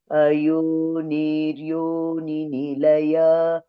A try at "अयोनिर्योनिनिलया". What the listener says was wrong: Only in the first name, Ayonir Yoni. We should not prolong this Ayoni. It's a short vowel there. Ayonir Yoni Nilaya.